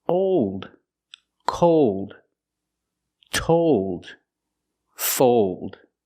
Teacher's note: here we're using a long o sound but it changes because of the dark L the long o is O like no and go or bone